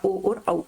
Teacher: कंठ होस्ट यानी कि कंठ और होठों से दोनों से बोला जाए